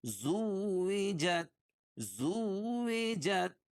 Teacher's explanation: زا کو واو میں سختی کے ساتھ ملائیں گے کیونکہ واو کے اوپر تشدید ہے